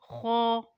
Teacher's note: ख हलक के ऊपर वाले हिस्से से अदा होता है